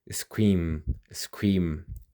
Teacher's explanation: Feel that duration at the end. That's a voiced sound.